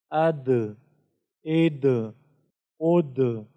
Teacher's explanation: دال کے اندر بھی صفت قلقلہ ہے، جس کی وجہ سے ہم اس میں بھی ٹکراؤ پیدا کریں گے، جس طرح اد اد اد۔